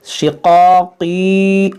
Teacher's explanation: یہ قاف حروف مشتعلیہ ہے, اس کو موٹا کریں گے.